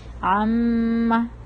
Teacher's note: عامہ میں پھر میم ہونٹوں سے ادا ہوتا ہے، تو ہمارے ہونٹ بند ہوتے ہیں، آپس میں چپکے ہوتے ہیں ہونٹ، اور آواز ہماری ناک سے آ رہی ہوتی ہے، ہم تھوڑا سا ہولڈ کر رہے ہیں. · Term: غنہ